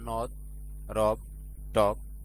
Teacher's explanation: একাক্ষর বিশিষ্ট শব্দের আদ্য অ এর উচ্চারণ বিবৃত হয়